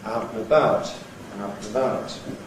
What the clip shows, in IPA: ˈaʊt nə ˈbaʊt